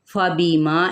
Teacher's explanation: फ़बिमा इन हरकत को लंबा नहीं करेंगे, जबकि माँ पे अलिफ मद्दा एक अलिफ के बराबर खींचेंगे